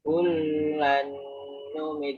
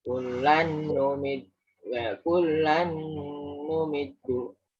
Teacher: untuk lam double ini sekedar double, tidak ditahan.